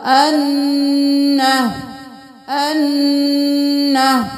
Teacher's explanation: नून के ऊपर तशदीद है तो गुन्ना होगा